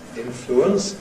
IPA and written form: ˈɪnfluəns (influence)